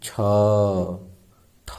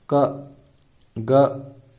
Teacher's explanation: छ, ठ बोलते हैं, ज्यादा गर्म वायु क्या होता है, प्रक्षेपित होता है, बाहर निकलता है, निष्कासित होता है, ठीक। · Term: महाप्राण